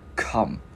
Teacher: Chữ K mình bật hơi cổ, mình gắn vào come.